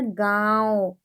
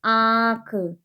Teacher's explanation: जिन शब्दों का उच्चारण नाक से और मुंह से होता है वो शब्द क्या कहलाते हैं, वो शब्द कहलाते हैं अनुनासिक